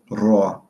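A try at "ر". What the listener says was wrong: Okay, so that sounds more. So I want to make sure that we're not pronouncing it as a R. It's not raw, not raw, like R-A-W, raw. No, but rather raw, raw. Do you hear the difference?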